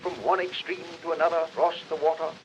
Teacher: a matter of aesthetic pleasure teddy roosevelt was a non-rhodic speaker he didn't pronounce r sounds after vowel sounds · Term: non-rhotic